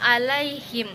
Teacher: Ada hukum tajwid pada kata alaihim, yang mana cara baca bunyi la dipanjangkan dua harokat